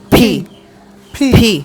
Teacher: আচ্ছা, ফিটা উচ্চারণ হবে দুই ঠোঁট চেপে ধাক্কা দিয়ে বাতাসটা হবে। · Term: অ্যাসপিরেটেড